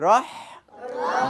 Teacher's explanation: রহ রহ হ্যাঁ হ্যাঁ হালকাভাবে বাতাস ছেড়ে দিতে হবে রহ রহ জিহ্বার আগার পিঠ তার বরাবর উপরে তালুর সাথে লাগিয়ে র আর হা হলো কন্ঠনের মাঝখানে রহ রহ রহ রহ রহ রহ বন্ধুরা এবার বলতে বলতে হয়ে